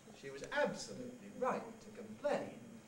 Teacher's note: In particular, rather than a high head or a stepping head, you can use a sequence of high fall nuclei. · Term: sequence of high falls